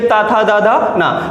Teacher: दंत के लिए ता, था, दा, धा, ना। हमारी जो जिह्वा होती है वो दंत में स्पर्श करती है